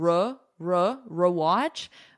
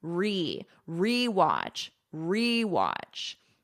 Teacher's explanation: And notice for pronunciation "re". I'm not doing like a schwa sound. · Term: full e